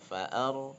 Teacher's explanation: lihat huruf ronya harokatnya sukun, huruf sebelumnya fathah berarti ronya tafkhim ya tebal.